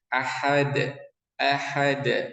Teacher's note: masuk ke huruf dal, ini dia qalqalah ya, memantul huruf dalnya.